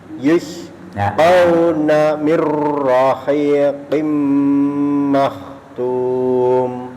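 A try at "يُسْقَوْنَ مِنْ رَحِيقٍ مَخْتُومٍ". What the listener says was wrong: Koknya kurang sempurna Bapak. Getarnya kurang. Mir rahiqim makhtum. Mirnya nggak usah tebal. Mirnya nggak tebal. Roknya yang tebal. Rohnya tebal, mirnya tidak. Sudah kita pelajari kan kapan roh tebal, kapan roh tipis. Roh tipis itu, roh tarkik itu kalau dia posisi mati, dibaca mati, sebelumnya kasro mi. Nah, itu berarti rohnya mir.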